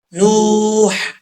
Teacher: نوح، وہ مدہ ہے، ایک الف کی مقدار اس کو لمبا کر کے پڑھا جائے گا